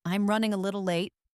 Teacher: Notice how the voice goes up on little. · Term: intonation